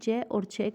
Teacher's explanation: च और छ कहाँ से बोली जाती है, ताल्लु से बोली जाती है